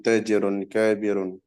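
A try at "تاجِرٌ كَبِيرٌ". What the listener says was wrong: panjang pendeknya jangan salah tuh. Tajirun kabirun. Tadi kayak panjangnya depan semua tajirun kabirun.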